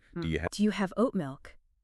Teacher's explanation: The D and the Y blur into one sound. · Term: assimilation